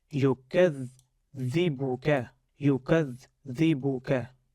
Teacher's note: you stress more on shadda first you give a pause and then you read the remaining part of the vowel present on top of the shadda or below the shadda. · we break dha into two components, dha sukoon and dha kasra